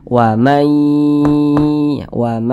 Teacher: jadi suaranya itu kita tahan kita panjangkan sejenak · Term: dengungan